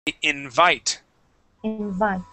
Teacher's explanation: So instead of saying invite, we say invite with the accent at the end of the word